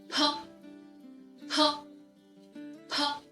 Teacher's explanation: initial labels that is p p like the first initial b shut the lips tightly to block the air and then open them quickly and force the air out so this sound is aspirated just as in the English word pay p p P now